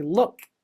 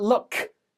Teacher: There's a you can barely hear the sound of my K. That K at the end, actually, I stop the air coming out of my mouth.